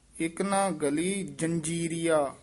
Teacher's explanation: ਗਲੀ ਪੋਲਾ ਹੀ ਬੋਲਣਾ ਗੱਲੀ ਨਹੀਂ ਕਹਿਣਾ